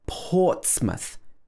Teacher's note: stressed so it's not pronounced mouth it's pronounced for example portsmouth the first part of the word is stressed ports so it's like port and then it's muth watch the th sound at the end · in these words it's not stressed so it's not pronounced mouth